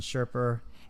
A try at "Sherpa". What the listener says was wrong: You said Sherper. you put like an on it. Like you got real Southern.